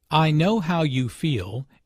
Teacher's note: Notice the emphasis on “feel.” The speaker wants to show empathy and understanding.